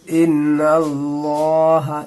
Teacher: ज़बर को पुर करके पढ़ेंगे मोटी करके और पेश की लाम को मोटी करके यानी पुर करके पढ़ेंगे।